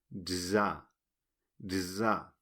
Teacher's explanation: la z es la más difícil nos explica Lombardo que suena similar a la tz pero más suave · parece ser que se pronuncia como la tz pero con la voz